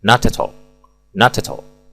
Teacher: Tarik mundur huruf T dan bunyikan sekaligus dengan vokal A pada kata at dan all. Maka bunyinya menjadi not at all.